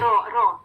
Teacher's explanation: فتحہ کے ساتھ مفخم رو